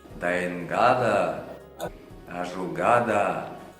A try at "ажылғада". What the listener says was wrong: Вот, да, еще ошибка в том, что он излишне озвучает эти звуки. Ажылғада, дайынгада. На самом деле они промежуточный. Ажылға да, дайынға да. Дайынға да.